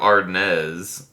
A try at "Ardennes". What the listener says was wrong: I feel like if it's French, you wouldn't pronounce the S. You'd just be like, Amur of Ardennes.